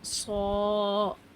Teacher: ان کی ادائیگی میں زبان کی جڑ اوپر اٹھ جائے، زبان تھوڑی گول ہو جائے، آواز بھاری اور ہیوی ساؤنڈ سنائی دے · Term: موٹے حروف